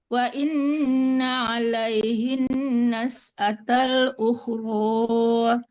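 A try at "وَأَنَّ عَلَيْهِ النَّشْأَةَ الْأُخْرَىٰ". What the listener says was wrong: Wa anna bukan wa inna. Ibu itu wa anna bukan wa inna.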